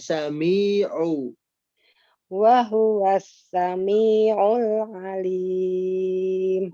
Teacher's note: Kurangi panjangnya pada kata sami'u, 2 harokat kan, diayunkan